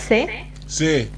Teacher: kind of similar to the sound of th in English together. So we kind of have to put your tongue towards your front teeth and and say it s.